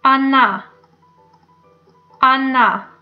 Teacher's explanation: The first letter is O, but we pronounce it like A.